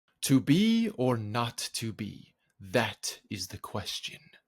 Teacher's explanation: this line is also doing something else it ends with question it has a feminine ending an extra weak syllable at the end